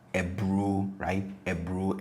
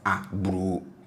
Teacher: So once you have the U in there, which is from plus ATR, then this A must be from the plus ATR set for this to be in harmony. So instead of A, this is E.